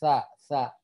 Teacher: Nah, fa-nya panjang kemudian huruf sa. Huruf sa itu makrojnya sama dengan huruf zal. Ujung lidah bertemu dengan ujung gigi seri atas.